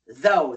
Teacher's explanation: The T-H is a voice T-H, and the O-U-G-H makes the long O sound.